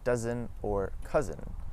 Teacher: The S in between two vowels as well as the zed sound make a z.